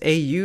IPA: aʊ